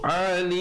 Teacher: ditutup mulut rapat menyempurnakan bunyi mim dengan kadar 2, 4 ataupun 6 harakat